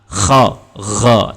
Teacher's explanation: Baru yang ketiga, bahagian atas halqum, yakni huruf kha dengan gha. Jadi bila kha dengan gha, dia ada seperti getaran ataupun seperti kita nak buang kahak